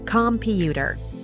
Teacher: in the word computer the stress is on the second syllable